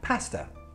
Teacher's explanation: Pasta finishes in a schwa sound, but there's no R when you spell it. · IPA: /pæstə/, /ə/